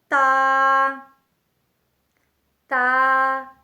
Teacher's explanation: با با با بند ہونٹوں کے گیلے حصے سے ادا ہوتا ہے، با۔ تا تا زبان کی نوک جب اوپر سامنے والے 2 دانتوں کی جڑ سے لگے تو اس سے تا ادا ہوتا ہے، یعنی زبان کی نوک اور ثنایا علیہ کی جڑ۔